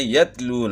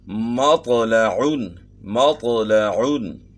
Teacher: تا کی آواز باریک اور بغیر جھٹکے والی ہوتی ہے. طا کی آواز موٹی اور جھٹکے والی ہوتی ہے.